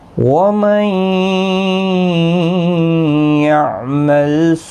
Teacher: نون ساکن کے بعد یرملون کا یا ادغام مع الغنہ ہوگا، غنہ کے ساتھ پڑھیں گے